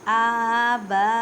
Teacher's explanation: آباءکم با الف سے پہلے زبر ہے, بڑی مد ہے اس وجہ سے 6 الف کی مقدار میں کھینچ کر پڑھیں